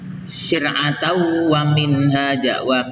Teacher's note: Syir'atan wa minhaja itu dibaca idgham bi gunnah syir'atau, tidak dibaca syir'atan ya.